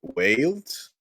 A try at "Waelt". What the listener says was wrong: Welt, yeah. the L is after the E. So it'd be like Wales or Velt or